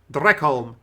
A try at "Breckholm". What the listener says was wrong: Breckholm with the B.